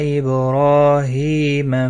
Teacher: را کے اوپر کھڑی زبر ہے، ہا کے نیچے کھڑی زیر ہے، ایک ایک الف کے برابر کھینچ کر پڑھیں گے، را پور بھی پڑھا جائے گا۔